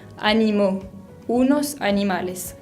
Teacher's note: como le sigue una palabra que empieza con una vocal en este caso la a tenemos que unir las para que quede más fluido